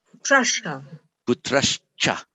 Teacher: Before a cha, the h changes to a sh.